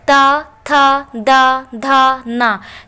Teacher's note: दंत वे वर्ड होते हैं जिनको बोलने के लिए अपनी जीभ को हम दांतों में स्पर्श कराते हैं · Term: दंतय